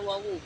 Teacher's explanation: Wawu ini keluar dari bentuk bundaran bibir. Wawu bersuara, dia itu sedang dan tipis.